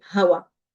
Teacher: And typically we drop the glottal stop.